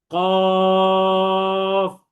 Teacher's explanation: জিহ্বার গোড়া তার বরাবর উপরে তালুর সঙ্গে লাগিয়ে উচ্চারিত হয়